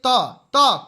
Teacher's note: त थ द ध न ये सब क्या है, दंत वाले हैं।